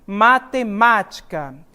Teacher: este ma, a sílaba tônica nessa posição, é a antepenúltima sílaba dessa palavra. Então, como é a antepenúltima, eu tenho uma palavra proparoxítona.